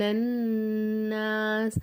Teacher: நூனுக்கு மேலே சத்து இருக்கிறதுனால என்ன செய்யணும், நூனு நல்லா ஒரு செகண்ட் அழுத்தி சொல்லணும்